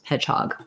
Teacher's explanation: So we in these kinds of words like hot dog, baseball, spondees, or compound words, first syllable has main stress, second syllable has secondary stress.